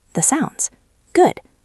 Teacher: That ends in T. Sounds starts with S. Drop the T.